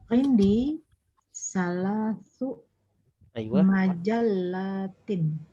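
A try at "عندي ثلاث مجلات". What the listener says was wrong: Naam, ahsanti, majallatin ya.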